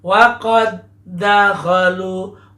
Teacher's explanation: Waqad dakhalu, kita baca agak ditahan karena huruf bertemu dengan huruf yang sama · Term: idgham mutamasilain